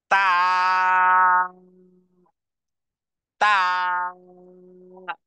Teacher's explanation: এরপরে তা, তা, তা, জিহ্বার আগা সামনের উপরের দুই দাঁতের গোড়ার সাথে লাগিয়েছি, উচ্চারণে আওয়াজকে কঠিন করেছি, ধাক্কা দিয়ে বলেছি তা, তা।